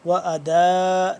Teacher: اس کو لمبا کریں گے 4 سے 5 الف کے برابر ، دال الف مد زبر دا، حمزہ دو پیش ان، ٹھیک